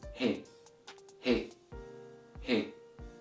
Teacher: the sound of the letter He is produced from letting a flow of air run through your open vocal cords or vocal folds. So it's pronounced as He, He, He. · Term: glottal sound